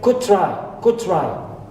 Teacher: I omit da at the end of could, first word, because la, da, and ta, right, cluster here.